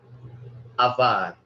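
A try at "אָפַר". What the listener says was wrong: Afar. I think you're wanting to pronounce the pe as a V sound, but it is pronounced as an F sound. So it's not avar, but afar.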